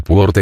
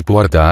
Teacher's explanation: acentuó su apertura hasta el grado de convertirse en diptongo